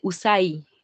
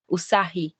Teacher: Like in the Philippines language, we see that the consonant H is inserted when we have two vowels following each other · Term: insertion